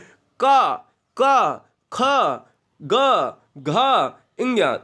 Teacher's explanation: जो व्यंजन कंठ से बोले जाते हैं वो कंठी स्पर्श व्यंजन कहलाते हैं